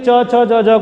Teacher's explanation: जिह्वा को अपेक्षाकृत तालु से अपेक्षाकृत अधिक संघर्ष या घर्षण करना पड़ता है, इसलिए च छ ज झ को स्पर्श संघर्षी व्यंजन कहा जाता है